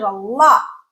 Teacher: That lot has a glottal stop at the end.